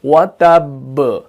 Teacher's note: کیونکہ اس کے اوپر تشدید ہے، کیونکہ ہم نے تشدید کو بھی ادا کرنا پڑتا ہے، کیونکہ یہاں پر با جو ہے وہ 2 بار ہے، ٹھیک ہے نا، کیونکہ تشدید جو ہے، تشدید کا مطلب ہوتا ہے ٹوائس، دوہرا، ٹھیک ہے، تو یہاں پر با 2 بار ہے، اس وجہ سے یہاں پر جو قلقلہ ہوگا وہ تھوڑا سا زیادہ سٹرونگ ہوگا